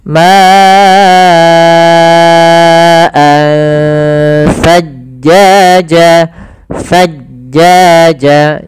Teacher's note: Maka ma'an sajjaja, pada lafal ansa di sini ada ikhfa, yaitu adanya tanwin bertemu dengan huruf sa, yang mana ikhfa itu kan ada hurufnya ada 15, salah satunya adalah sa dan zai tadi di awal. Maka cara membacanya langsung samar ke sa